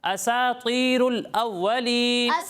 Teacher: سین کو باریک پڑھنا ہے، طا کو پر پڑھنا ہے، موٹا پڑھنا ہے